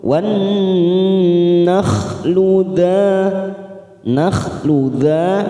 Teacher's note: Langsung masuk ke huruf nun yang bertasdid, kita tekan 3 ketuk, namanya bacaan gunnah musyaddada. Nah, kita tekan 3 ketuk.